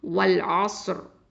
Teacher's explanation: தஃப்ஹீமா, அதாவது வல்லினமாக தான் ஓதணும்.